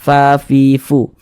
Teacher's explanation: cara mengucapkan huruf Fa itu ada nafas yang mengalir ketika Kita mengucapkannya